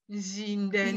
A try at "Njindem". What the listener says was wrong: Non, ZH, c'est je. ZH, c'est je. Njindem. Njindem.